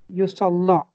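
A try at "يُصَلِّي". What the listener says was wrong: Yusalli. This time ya has two dots, so we need to pronounce it. In musalla, ya does not have any dot. That was alif maksura. But here we have dots, we need to pronounce it. Yusalli.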